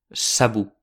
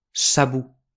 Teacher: Ausissem pas la N e avem l'impressió que lo mot s'acaba per la vocale U. Sabut. Ma pramo che ha una N, se dits pla sabut, ed insistissem sulla darrière syllabe.